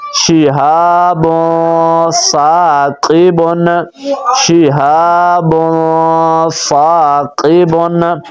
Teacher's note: تنوین کے بعد آپ حضرات دیکھ رہے ہیں کہ سا آ گیا ہے اور سا حروف اخفا میں سے ہے، تو اب اس کے اندر ہم غنہ کریں گے۔ فا الف زبر سا، قاف زیر قی، فاقی، با دو پیش بن، فاقبن، شہاب ثاقبن، شہاب ثاقبن۔